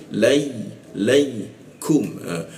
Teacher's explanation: huruf ku di siku tenggorokan, lidahnya diturunkan sehingga ada hembusan udara ketika membaca kum